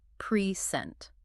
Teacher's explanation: As a verb to deliver something, the stress is on the second syllable